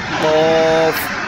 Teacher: চার নম্বর মাখরাজ হচ্ছে জিহ্বার গোড়া তার বরাবর উপরে তালুর সঙ্গে লাগাইয়া উচ্চারিত হয় কফ, মোটা করে কফ।